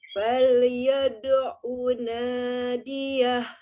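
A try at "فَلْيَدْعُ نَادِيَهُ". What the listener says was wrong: Iya. Lamnya ditahan sedikit.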